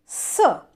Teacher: जैसे हम एक हवा बाहर निकालेंगे दांतों से, स, तो आपकी जो जिह्वा है वो दांतों को स्पर्श कर रही है, इसलिए इसको कहा जाता है दंत्य। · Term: दंत्य सकार